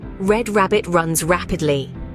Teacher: the English R is less harsh and more relaxed than the French R